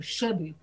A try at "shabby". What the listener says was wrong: shabby. Now, drop your jaw more. Shabby.